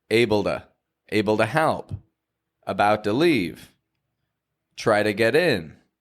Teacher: the T that I'm using with those is a flap T.